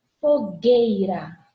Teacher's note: Tá vendo que eu não pronuncio o U? O Uzinho tá aqui, ó. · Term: dígrafo